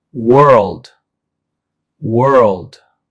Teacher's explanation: World also has one syllable but includes an extra L sound pronounced world. The key difference is the dark L sound before the final D.